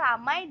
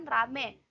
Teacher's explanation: Perubahan ini terjadi pada bunyi vokal rangkap ai ke vokal tunggal e. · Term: moftongisasi